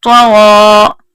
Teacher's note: طا اور غا دونوں پر پڑھے جانے حروف ہیں، یہ دیکھیں گرین حروف ہیں، ان کو پر ہی پڑھیں گے.